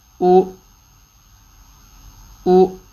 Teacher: حمزہ پہ پیش گول ہوئے، اگلے حمزہ پہ جھٹکے کی آواز کے اوپر ہونٹ پیچھے اپنے واپس چلے گئے